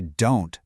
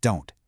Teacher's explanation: He uses that stop T. The sound just gets cut off.